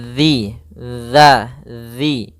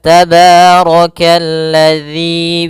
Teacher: makhrajnya, tempat keluarnya adalah ujung lidah kita menempel dengan gigi seri atas, dan dia kalau bisa sedikit tergigit gitu ya, zi. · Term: zal